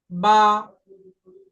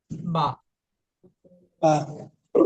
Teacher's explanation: ঠোঁটের ভিজা অংশ থেকে ঠোঁট বন্ধ রাখবেন দেখবেন ভিজা অংশ ভিজা অংশে মিলে রইছে